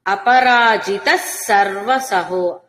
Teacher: విసర్గ సకారం కాబట్టి అపరాజితస్ అన్నట్టుగా